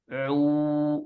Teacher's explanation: cara melafalkan huruf wau ini tidak boleh ada suara yang keluar dari hidung